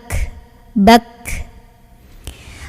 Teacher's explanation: Dan ketika sukun, ini hamesnya lebih kelihatan anginnya ya. Tapi sebelum keluar angin, suaranya tertahan dulu syiddah. Jadi ka dulu, bak, ketahan dulu, baru angin.